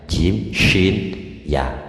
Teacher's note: jim syin ya itu hampir sama itu keluarnya lidah geraknya lidah itu hampir menyentuh langit-langit